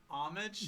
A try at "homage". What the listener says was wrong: You don't pronounce the H in homage.